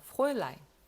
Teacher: 요거는 프라울라인이라고 읽지 않고 프로일라인이라고 읽어요. 요 발음이 오이 발음이 나기 때문이에요.